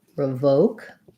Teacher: So revoke has the O sound and a schwa here, revoke. Second syllable stress